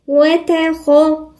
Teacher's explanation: خلوا بالكم ان الخاء هنا مفخمة